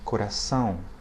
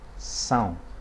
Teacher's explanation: the diphthong, the A and the O, which are nasalized